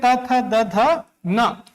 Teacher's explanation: त, थ, द, ध न। हमारा जीभ जो है वो दांत को स्पर्श करता है और इसको हम कहते हैं दंत्य। क्योंकि बिना दांत को स्पर्श किए त थ, द, ध न का प्रयोग आप नहीं कर सकते।